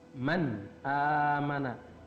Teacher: nun mati bertemu dengan alif, maka N-nya harus jelas, man. Ya. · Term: idhar